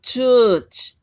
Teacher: र नहीं है, अ की लंबी साउंड है